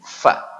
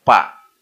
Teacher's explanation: huruf Fa keluar dari perut bibir bawah dengan ujung gigi seri atas